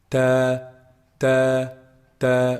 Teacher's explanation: Ta is actually pronounced from the top part of the tip of the tongue. The top part of the tip of the tongue when it hits the roots of the upper front incisors.